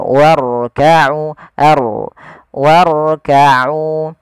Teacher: jangan sampai huruf ra itu takrirnya berulang kali